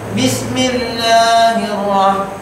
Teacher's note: kalau sekiranya sebelum kalimat Allah itu berbaris bawah, dia dibaca nipis